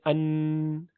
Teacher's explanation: آدھا حصہ اس کا ناک سے نکلتا ہے، مخرج اس کا آدھا ناک میں جاتا ہے اور آدھا اس کی آواز زبان کی نوک سے آتی ہے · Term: نون